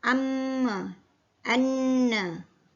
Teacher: Al-Khayshum, iaitu pangkal hidung. Dari makhraj ini keluar bunyi dengung gunnah, mim dan nun.